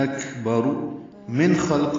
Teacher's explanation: اکبر من خلق میں نون ساکن کی بعد خان کی وجہ سے اظہار حلقی ہے، نون کی آواز کو ظاہر کریں گے